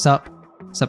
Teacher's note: we might take off the first syllable and just connect the s to the up